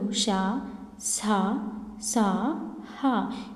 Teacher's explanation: గాలిని బయటికి ఊదుతూ పలికే అక్షరాలు ష, స, స, హ ఇవి ఉష్మాలు.